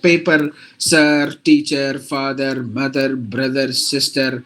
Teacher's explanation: Indians most of the time we pronounce all the R's whatever the context it is